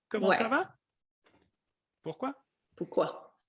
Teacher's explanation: in French, the voice goes up when you ask a question